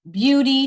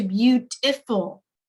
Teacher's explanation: that feature both uh orthographic and phonological alteration Beauty to beautiful we went from that long e sound to that schwa sound